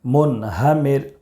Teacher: را ساکن سے پہلے زیر ہے، اس لیے باریک پڑھیں گے